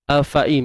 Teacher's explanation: Tuan-tuan puan, untuk A ni macam biasa satu harakat, fa satu harakat, hamzah ni pun kalau ikutkan dia satu harakat je. Sepatutnya bunyinya afain.